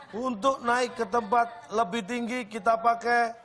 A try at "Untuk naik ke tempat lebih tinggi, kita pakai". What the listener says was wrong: Datar banget. Untuk naik ke tempat lebih kita pakai. Yang benar Pak intonasinya Pak.